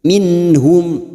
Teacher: nun sukun bertemu ha Idhar halq dibaca jelas tanpa mendengung